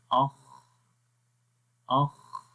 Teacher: ہمس بھی ہو رہا ہے خا کے اندر، اور رخاوت بھی ہے